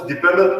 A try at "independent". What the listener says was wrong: Independent. Okay. You just say in. That's enough.